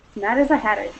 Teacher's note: a lot of times you'll hear it almost as if it's a double D rather than a double T. So you'll hear more almost like a hadder sound.